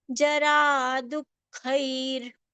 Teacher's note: Du gets the aghat of half kha after it immediately, and khai is to be pronounced with the visarga as half ra